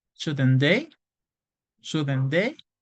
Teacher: la entonación siempre tiende a caer. Eso se llama falling intonation.